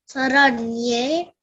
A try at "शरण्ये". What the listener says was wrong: No sa. It is yes. There is slant on top of that. Sharanye. Don't say sa. It is sha. Shankara sha. You know how do you pronounce HS? She. You know, like you pronounce she.